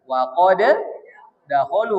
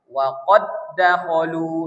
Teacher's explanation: Karena dia bertemu dua huruf, ya, maka diidghamkan. Huruf pertamanya dimasukkan ke huruf kedua, maka disebut idgham.